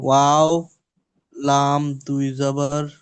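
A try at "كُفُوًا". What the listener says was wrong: ওয়াও লাম নেই, আলিফ আছে। ওয়াও দুই জাবার বলেন। ওইটা দুই জাবারের ক্ষেত্রে আলিফটা আনা হয়েছে। বলেছিলাম না, যেখানে দুই জাবার আসবে তারপরে একটা আলিফ আনতে হয়। ওয়াও দুই জাবার ওয়ান, ওয়াও দুই জাবার ওয়ান, ওয়ান। কুফুওয়ান।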